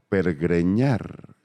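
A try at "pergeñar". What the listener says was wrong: Pergueñar. Sin la segunda R, no es pergreñar.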